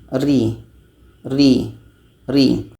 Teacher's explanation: sifatnya di sini tarkik maka jatuh kepada istial Ri Ri Ri ro ini dimasukkan ke dalam istiffal karena dibaca secara tipis